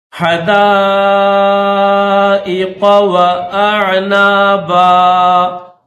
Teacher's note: ہا کو گلے سے ادا کیا جاتا ہے